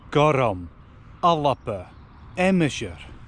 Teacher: Each one is pronounced with an extra syllable than is written. · I'm adding a vowel into where actually there's only consonants written. This is called Epenthesis, or a helping vowel.